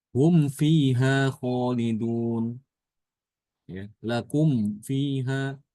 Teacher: ketika ada mim jamak setelahnya huruf yang berharokat, ya, maka mimnya itu tidak disilahkan tapi disukunkan.